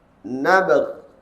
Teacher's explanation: Sifat qalqalah tu lemah disebabkan mematikan huruf yang di hujung tersebut.